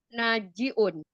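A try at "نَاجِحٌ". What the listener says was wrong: Nah, bukan najiun ya, bukan ain, Umi. Najihun. Iya, pakai ha bukan ain.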